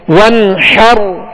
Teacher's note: حا کو وسط حلق سے ادا کریں گے